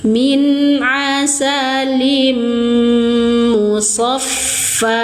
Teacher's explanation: Limu kasrah tanwin bertemu dengan huruf mim. Idgham bighunah. Kamil sempurna dengungnya. Tahan tiga ketukan.